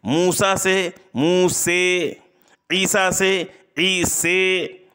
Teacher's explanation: الف کو یا کی طرف اور فتحہ کو کسرہ کی طرف اس قدر مائل کرنا کہ یا اور کسرہ کا غلبہ ہو جائے، یا اور کسرہ کا غلبہ ہو جائے تو اس کو امالہ کبریٰ کہتے ہیں۔